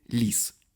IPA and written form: lʲis (лис)